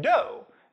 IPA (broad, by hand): do